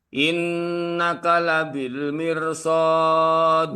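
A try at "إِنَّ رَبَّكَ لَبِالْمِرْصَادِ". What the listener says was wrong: Diulang. Nah, betul. Tadi innaka.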